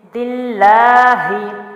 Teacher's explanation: عیبا، دال جو ہے اس کے نیچے زیر ہے اور یہاں اللہ کا لام ہے، اور ہم جب دال کو لام سے ملائیں گے تو اللہ کا لام ہم باریک پڑھیں گے۔ کیسے؟ دال زیر لام دل، لام کھڑی زبر لا، دل لا، ہا زیر ہی، دل لا ہی، ٹھیک ہے۔